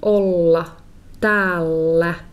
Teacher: When I say these two ls, just like olla, I hang onto that l sound.